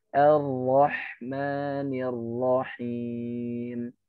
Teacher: kalau misal kita biasa baca ro itu dengan 3 takrirnya, berarti ketika dia berharokat tasydid, kita kurangi menjadi 1.